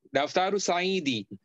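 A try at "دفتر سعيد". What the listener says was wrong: Ada tanwin.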